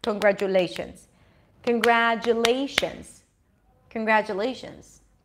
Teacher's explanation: All of a sudden, you have a long vowel, lay, a medium length vowel, gra, and two short vowels, kun and j and shun. So we get this rhythm, ta-da-da-da-da, instead of ta-ta-ta-ta-ta.